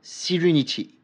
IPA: si: renɪtɪ